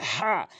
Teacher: এখানে হাটি হলকের মাঝখান থেকে উচ্চারণ করতে হবে